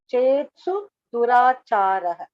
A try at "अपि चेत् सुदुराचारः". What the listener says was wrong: அது actually வந்து अपि चेत् सुदुराचारः सुदुराचारः is one word दुराचारम very bad दुराचारः is सुदुराचारः so अपि चेत् सुदुराचारः